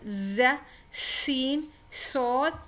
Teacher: when you pronounce them you will feel the sound of whistle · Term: whistle sound letters